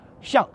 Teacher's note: Ici, ce caractère se prononce au 4e ton.